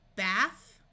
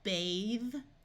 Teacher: it changes the TH to the voice sound of th.